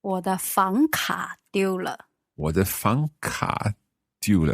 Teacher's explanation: 房 second tone, 卡 third tone